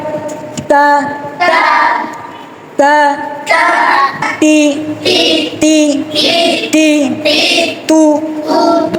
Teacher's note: তারপরে তা হরফটি উচ্চারণ করতে পাতলা করে উচ্চারণ। তা হরফ উচ্চারণে বাতাস চালু থাকবে, আওয়াজ বন্ধ থাকবে, জিহ্বার মধ্যখান উপরের তালু থেকে ফাঁকা থাকবে বা পৃথক থাকবে। তারপরে তা হরফ উচ্চারণে পাতলা করে আদায় করতে হবে। · 11 নম্বর মাখরাজ, জিহ্বার আগা সামনের উপরের দুই দাঁতের গোড়ার সঙ্গে লাগিয়ে